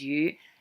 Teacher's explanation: the word for rain which is here low rising that's the noun so actual rain is you and the verb of raining or